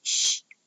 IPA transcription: ʃ